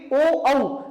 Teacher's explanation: ओ औ को दोनों का उच्चारण स्थान क्या है, कंठ और ओष्ठ। बोल के देखिए ओ औ, यहां का भी प्रयोग है और ओठों का भी प्रयोग है, तो क्या इसका स्थान हो गया, कंठोष्ठ, कंठ जमा ओष्ठ, ठीक है।